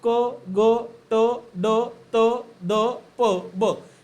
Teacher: ज्या वर्णाचा उच्चार हा हवा जास्त प्रमाणामध्ये बाहेर फेकल्यामुळे स्फोट झाल्यासारखा आवाज येतो त्याला स्फोटक व्यंजने म्हणतात · स्फोटक व्यंजने म्हणजे काय, तर हवा अडवून जोरात बाहेर फेकणे, त्याला आपण स्फोटक व्यंजने असं म्हणत असतो